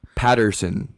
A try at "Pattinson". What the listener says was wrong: It's not Patterson. There's no R in it.